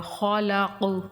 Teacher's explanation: ربک الذی خلق، لام مشدد تھوڑا سختی سے پڑھا جائے گا، اور خلق کا قاف جو ہے یہ پور پڑھا جائے گا اور کلکلے کے ساتھ پڑھا جائے گا